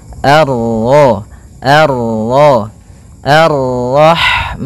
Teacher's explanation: bertemu dengan huruf ra yang berharakat tasydid, maka ra-nya kita baca dengan tafkhim